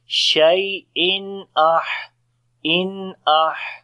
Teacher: After the tanween, the next letter is hamza. So we make izhar here, the clear sound of noon, as we say shay'in in ah.